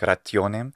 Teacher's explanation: I love again the consonantal sound in rationem, and there's even a kind of palatalization sound effect, so it's like rationem in the way he's saying it.